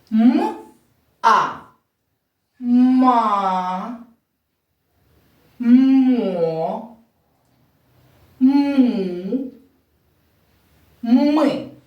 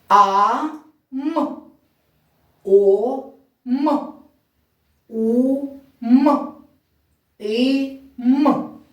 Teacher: я промовляла закритий склад я голосний м виговорювала чітко і коротко коли я промовляла склад м а я звук м наче проспівувала щоб він поступово приєднався до голосного звуку